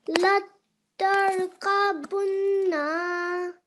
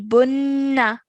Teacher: Okay, so the noon gunna sound is when whenever you have noon mushaddad, you will produce a 2-second nasal sound. Okay, 2-second gunna sound that will be held in your nose whenever you see noon mushaddad.